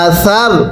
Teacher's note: সাটা উচ্চারণের সময় জিহ্বাটাকে দাঁতের আগার সাথে লাগাবেন, নরম করে উচ্চারণ করবেন